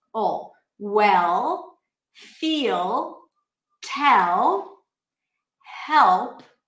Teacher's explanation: you actually push the back of the tongue down, and that's what you do for the dark L.